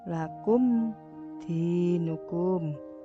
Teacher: mem mati bertemu dal maka dibaca jelas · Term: idhar safawi